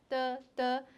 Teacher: du is a voiceless unaspirated stop